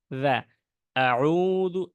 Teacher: জালের সময় আমাদের জিহ্বাটা বের হবে